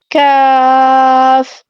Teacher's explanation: اور جب ہم نے کاف ادا کرنا ہے تو زبان کی جڑ نرم تالو سے ذرا آگے سخت تالو کے ساتھ لگتی ہے، ٹھیک ہے، سخت تالو کے ساتھ لگتی ہے تو کاف ادا ہوتا ہے۔